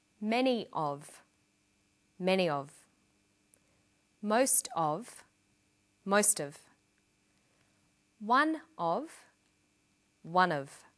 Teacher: Notice that of in these phrases is unstressed.